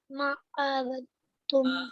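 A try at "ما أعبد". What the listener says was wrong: आबुद, आबुद, last वाले को साकित करो,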